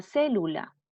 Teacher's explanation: esdrújulas la palabra célula ahí está lleva la sílaba tónica en la ante penúltima sílaba